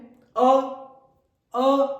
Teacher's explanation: ऐसे स्वर जो कंठ से और कंठ से ऊपर जो कोमल तालू है वहा से भी बोला जाता है तो इसे कंठी और कोमल ताल भी कहा जाता है उच्चारण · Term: कोमल तालव्य स्वर